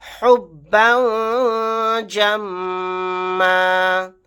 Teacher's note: با کے اوپر تنوین ہے، تنوین کے بعد جیم آ گیا، یہاں پر اخفا کا قاعدہ ہوگا